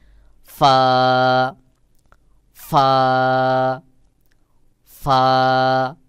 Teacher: সহি উচ্চারণ হলো নিচের ঠোঁটের পেট সামনের উপরের দুই দাঁতের আগার সঙ্গে লাগাইয়া বাহিরের দিকে বাতাস বের হবে